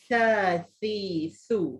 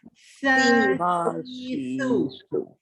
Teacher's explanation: lidah kena keluar sedikit antara dua gigi. Kalau lidah tu tak keluar antara dua gigi, maknanya salah sebutlah tu.